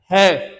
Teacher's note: है कहां से बोला जा रहा है? कंठे से बोला जा रहा है।